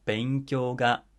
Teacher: 勉強が starts low, goes high